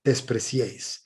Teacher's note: La vocal fuerte es la E y se hace acompañar de dos vocales débiles, una que le precede y otra que le antecede. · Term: triptongos